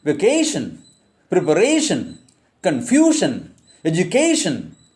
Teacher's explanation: take stress on the penultimate syllable. That is, second syllable from the end. Yes, second syllable from the end.